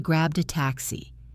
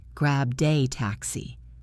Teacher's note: The D in grabbed connects to the A.